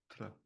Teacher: So to get authentic pronunciation for this one, so it doesn't sound like the other clan, your upper lip is, your tongue is behind your upper front teeth, and that tongue is snapped down when you pronounce the TL